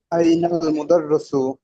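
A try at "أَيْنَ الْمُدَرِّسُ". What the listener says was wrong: আইনাল মুদাররিসু, কি হবে? রয়ের নিচে জের হবে, হ্যাঁ।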